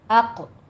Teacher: اقربین میں حمزہ کو آپ نے باریک ہی رکھنا ہے، اوقو نہیں کہنا، منہ بھر کے نہیں پڑھنا، حمزہ باریک رہے گا۔ اق قوف موٹا پڑھنا ہے، اس پر قلقلہ بھی کرنا ہے، رو بھی مفخم پڑھی جائے گی